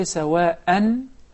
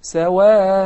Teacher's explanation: In case of stopping, I prolong the alif harakatayn. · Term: maddu al iwad